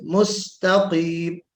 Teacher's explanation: सीन को बारीक पढ़ना है, ता को बारीक पढ़ना है, काफ को मोटा पढ़ना है